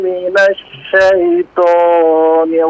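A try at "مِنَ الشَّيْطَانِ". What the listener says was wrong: Minasya. Na huruf nunnya coba diperjelas fathahnya Pak ya. Jangan mino terkesan minasyo. Ya, nasyayita. Shinnya masih agak kurang pas makhrajnya Pak ya.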